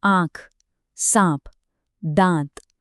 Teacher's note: सीधे-सीधे कहें, तो यह चिन्ह पढ़ने वाले को बस इतना बताता है कि स्वर की ध्वनि को मुंह के साथ-साथ नाक से भी निकालना है। बस आ से आ तक का जो सफर है, वह यही चंद्रबिंदु तय करता है।